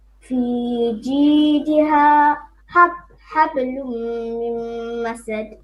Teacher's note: جيدها is one ha, bottom throat, and then حبل, another ha, different